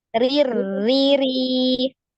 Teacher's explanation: Yang kasro rir, ditipiskan.